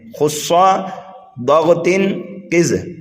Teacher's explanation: یہ ہر حالت میں پر یعنی موٹا کر کے ہی پڑھے جاتے ہیں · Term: حروف مستعلیہ